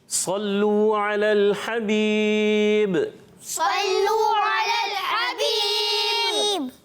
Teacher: آخر میں با قلقلہ بھی ہوگا